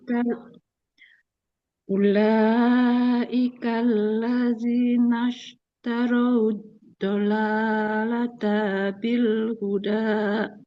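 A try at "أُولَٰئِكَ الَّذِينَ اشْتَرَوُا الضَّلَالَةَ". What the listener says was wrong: oke, lamnya yang kedua nggak boleh panjang. Ta-nya nggak boleh panjang. Ulaikal ladzina ishtarawud dhalalata bil huda.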